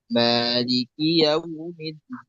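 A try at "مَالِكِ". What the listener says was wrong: Maliki dibaca satu harokat, dua harokat untuk Hafs. Untuk riwayat Hafs dibaca tulisannya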